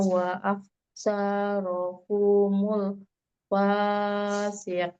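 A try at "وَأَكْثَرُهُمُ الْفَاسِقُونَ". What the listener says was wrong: Sekali lagi panjang pendeknya. Yang pendek jangan dipanjang-panjangin ya. Nanya juga pendek. aksaruhum humul pendek. Wa aksaruhumul fasiqun. Sanya pendek. sanya pendek. Saru bukan saro. Saru domah roknya. Ru. Wa aksaruhumul saru. Domah runya.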